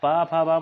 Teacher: ये ध्वनियाँ जो बोली जाती हैं ये किससे बोली जाती हैं? ओष्ठ से